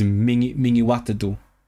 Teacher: because the stress is on wat, so it's mingi wat do